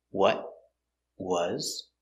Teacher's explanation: it's a stop te you can stop it with your tongue up what was or you can stop in your throat what was